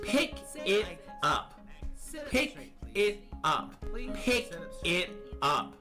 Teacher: The K in pick links with the I in it. And the P in op. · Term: merging